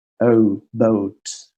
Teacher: this is easy because it's like o, like two sounds, but it ends in u. O. For example, boat.